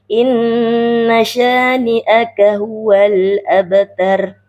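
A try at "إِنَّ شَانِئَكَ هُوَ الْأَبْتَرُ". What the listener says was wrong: Bukan ter. Nah, gitu ya.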